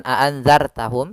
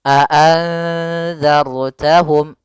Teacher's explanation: Maka kita namakan dengan ro tafkhim. Ro yang dibaca dengan tebal.